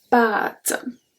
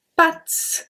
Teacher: Because of the accent circumflex, we pronounce it longer. If you don't say pâtes, if you say pattes, it's the leg of an animal.